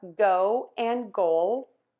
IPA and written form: goʊ, goʊl (GO, GOAL)